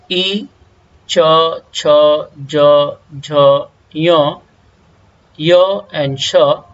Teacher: और नेक्स्ट सूत्र है एफोरिज्म संस्कृत में, इचु यशानाम तालु, अर्थात मीन्स ई, च, छ, ज, झ, य एंड श, इन सभी लेटर्स का प्रोनाउंसिएशन प्लेस, उच्चारण स्थान तालु है, जिसे इंग्लिश में कहा जाता है पैलेटल।